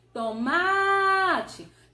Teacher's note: Perceba que o má parece que está mais intenso, parece que ele pesou um pouco mais e demorou mais na nossa pronúncia. Então eu percebo que a sílaba mais forte aí é o má, ou seja, é a penúltima sílaba da palavra. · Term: paroxítona